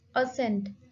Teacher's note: it has two syllable and the stress is on the first syllable, a sound. Assent.